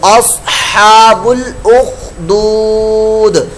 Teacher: یہ صاد کی آواز جو ہے یہ پر موٹی ہوتی ہے، حروف مستعلیہ میں سے ہے، اس کی جگہ سین کی آواز نہیں نکلنی چاہیے ورنہ یہ لحن جلی ہو جائے گی۔